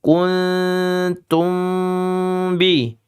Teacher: Kun ini karena ikhfa'nya akrab, ikhfa' yang dekat, dia hampir N tapi tidak N. Cuman hampir aja ya. · Sama-sama ikhfa', satunya ikhfa' akrab, satunya ikhfa' syafawi. Sama-sama tidak boleh jelas. Samar semua. Kun itu samar.